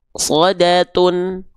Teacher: Tapi mu-nya akan terhentak karena dia berjumpa dengan hamzah sukun.